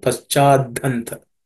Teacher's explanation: And aspirate, that's the fourth letter in the tha varga. So the ha becomes dha, the fourth letter in the tha varga.